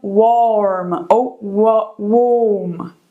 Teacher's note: esse warm aqui é aquele A comprido, com 2 pontinhos, então aquele som de O ou O.